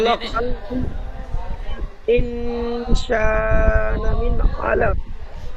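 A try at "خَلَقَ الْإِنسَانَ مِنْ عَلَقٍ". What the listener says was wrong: হ্যাঁ, প্রথমে পড়লেন এখানে গুন্না ছেড়ে গিয়েছিল, তো খেয়াল করে গুন্না করতে হবে।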